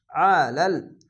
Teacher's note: আইনটিকে মোটা করে গলা চিপে পড়বেন